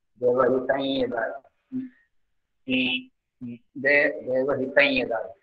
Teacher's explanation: You may notice the nasal sound between devahitam and dayu.